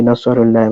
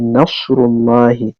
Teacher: Nasrullahi za mu ɗaure sadun ɗin nan, ba za mu ce nasarullahi ba, za mu ce nasrullahi.